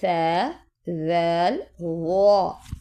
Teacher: دونوں دانتوں کے درمیان آپ کی زبان کا کنارہ ذرا سا ٹچ ہو